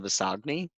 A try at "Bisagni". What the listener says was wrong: It's close enough. The G is silent.